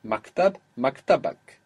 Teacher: The accent will move one down when you add on that extra syllable.